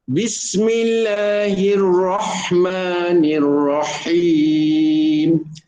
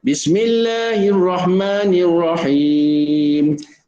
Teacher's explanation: Letakkan di tengah kerongkong, disempitkan dinding kerongkong, baru keluar huruf ha pedas tu. Kalau kita baca Bismillahirrahmanirrahim, dia tak sampai, bunyi macam ha, tapi tak sama.